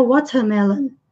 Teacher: no inglês britânico, como eles não costumam pronunciar esse R, vai ficar watermelon